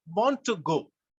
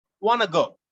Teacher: in english we say want to go but when we say it in quick succession we say wanna go